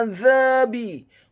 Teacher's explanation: Kemudian kata azabi, huruf ainnya ditekankan keluar dari tenggorokan bagian tengah, fathah satu harokat. Huruf za-nya dibaca tipis, tarqiq, lidahnya agak keluar sedikit, fathah dua harokat karena setelahnya ada alif.